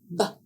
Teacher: To make the sound of the letter b, b air is blocked by the lips. No explosion of air is made, but air is used along with voice. B is a voiced sound, and the keyword is bat.